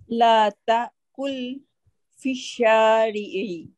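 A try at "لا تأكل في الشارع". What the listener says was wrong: খেও না, very good.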